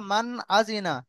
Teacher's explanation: ইজহার করে তাড়াতাড়ি পড়তে হবে বিনা গুন্নায়